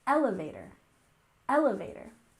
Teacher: We have emphasis on the first syllable, elevator, elevator.